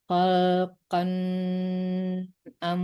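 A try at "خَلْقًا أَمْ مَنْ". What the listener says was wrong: Jangan tertahan ya. Khalqan amman khalaq. Jadi nggak boleh ditahan di huruf izhar itu ya, di hukum izhar.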